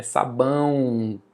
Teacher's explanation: Na semivogal, o som do i e o do u nós vamos chamar de semivogal, mas é som, não é necessariamente letra, porque nesse caso aí sabão, a letra é o, mas o som é u.